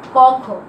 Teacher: এই ক, খ ধ্বনিগুলো উচ্চারণ করার সময় কি হয়, স্বরতন্ত্রী বেশি অনুরণিত হয় না, অর্থাৎ স্বরতন্ত্রী কাঁপে না, সে কারণে এগুলোকে বলা হচ্ছে অঘোষ ধ্বনি।